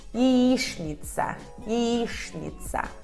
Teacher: ya se reduz até i, por não estar na sílaba tônica. E tchn se lê como shn.